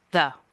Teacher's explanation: jaw height one sounds that happen around jaw height 2 include the neutral vowel uh unstressed as in the word the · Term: neutral vowel unstressed